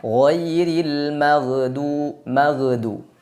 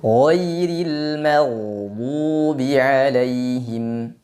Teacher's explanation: huruf gain tidak disifati dengan Qalqalah Maka jangan dibaca dengan memantul